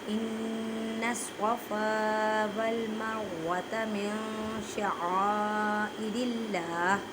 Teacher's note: نون ساکن کے بعد شین ہے، شین حروف اقفا میں سے ہے، اس وجہ سے یہاں پر اقفا کا قاعدہ کریں گے، مینس کہ من نہیں کہنا۔ نون ساکن کی آواز کو چھپانا ہے ایک الف کی مقدار میں · إِنَّ الصَّفَا، نون مشدد گنہ کریں، گننے کا مطلب ہے آواز کو ناک میں لے کے جانا ایک الف کی مقدار میں